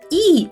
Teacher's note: губи максимально розтягнуті в сторони у широкій-широкій посмішці